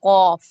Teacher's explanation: तो अक्साए लिसान यानी जुबान की जड़ और बिल मुकाबिल ऊपर का तालु। जुबान की जड़, जो आपकी जुबान की पीछे जड़ है, वो उसके ऊपर जो अपोजिट पॉइंट पे, जो ऊपर मुकाबिल पे तालु है, उसके साथ लगेगी जाके।